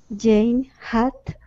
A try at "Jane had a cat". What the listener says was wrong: almost almost move your tongue back you're touching your tongue to your teeth